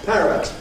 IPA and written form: ˈpærət (parrot)